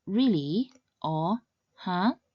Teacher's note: The second tone starts at about midrange and rises upwards much like the tone used one expressing surprise or one asking a question